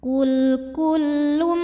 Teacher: Karena tanwin dhammah menghadapi huruf mim, maka tanwinnya masuk ke mim, kullum disertai bunyi dengung. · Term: idgham bi gunnah